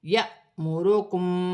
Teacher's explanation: الف مدہ بن رہی ہے، الف پر جزم کی حرکت ہے، الف حمزہ پڑھا جائے گا اور جھٹکے کے ساتھ پڑھا جائے گا